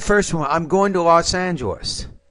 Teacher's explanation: right after Los Angeles the tone should fall